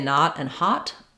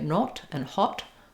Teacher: That's the British English that they use in words like not and hot. We say not and hot, unrounded. They say not and hot, rounded. So it's in the same bottom corner of the vowel quadrangle.